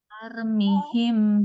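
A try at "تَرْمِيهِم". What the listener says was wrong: Panjang. Taumihim panjang.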